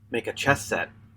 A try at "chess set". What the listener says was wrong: Yeah, chess. Chest. It sounded like you said chest set.